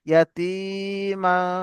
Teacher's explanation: তানবিনের পরে হরফে ইকফার 15টি অক্ষরের মধ্যে ফা এসছে, এই তানবিনের আওয়াজকে নাকে তুলে এক আলিফ পরিমাণ গুণনা করে পড়তে হবে